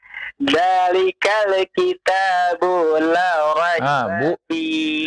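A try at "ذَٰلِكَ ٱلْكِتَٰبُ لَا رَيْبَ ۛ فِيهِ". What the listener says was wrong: Bu-nya jangan dipanjangkan ya. Coba ulang lagi.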